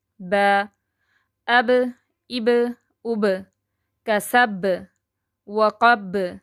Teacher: جو کسب پہ آ رہا ہے نا قلقلہ، یعنی کہ لاسٹ ورڈ پہ ہے، تو یہ قلقلہ کبرا ہے، یعنی کہ بڑا قلقلہ